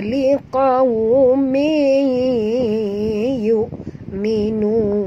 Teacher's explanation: Tanwin bertemu dengan ya, idgham ma'al gunnah. Kena masukkan sepenuhnya bunyi tanwin ni baris 2 bawah ni ke dalam ya.